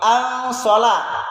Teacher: ada nun sukun ketemu dengan so, huruf sod. Ini disamarkan ke huruf sod, atau inilah yang disebut dengan ikhfa, samar.